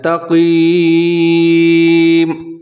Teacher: اب یہاں تا باریک ہے اور کاف موٹا کر کے پڑھنا ہے